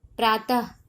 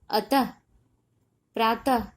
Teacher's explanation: उच्चारण करने पर लास्ट में ह का ध्वनि आ रहा है ना, अतः, प्रातः, ठीक है। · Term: विसर्ग